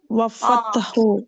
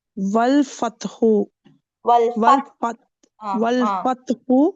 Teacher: இது கமரியா, அப்ப லாம உச்சரிக்கணும்.